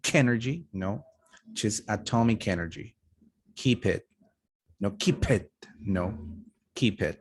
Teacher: no aspiration when you're joining a final consonant plus vowel